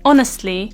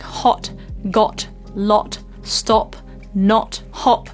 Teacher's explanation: the lip shape is very round and quite small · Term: Short Round o sound